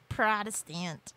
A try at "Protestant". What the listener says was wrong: No, you're missing the T on the end. Protestant.